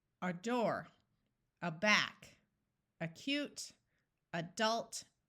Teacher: remember that the A at the beginning of the word is going to schwa